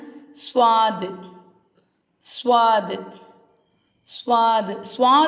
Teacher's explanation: சொல்லும்போது நமக்கு லைட்டா விசில் சவுண்ட் வரும்